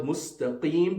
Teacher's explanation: And then in the word mustaqim, the qaf must be read from the back of the throat